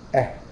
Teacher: المخارج بقى الهمز والهاء شوف بتخرج منين اقصى الحلق